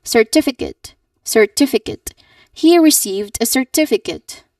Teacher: you should stress the second syllable, tif, the tif.